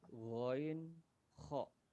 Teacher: Huruf yang keluar dari tenggorokan bagian atas